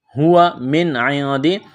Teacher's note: نون ساکن کے بعد عین ہے، حروف حلقی ہے، نون ساکن پر غنہ نہیں کریں گے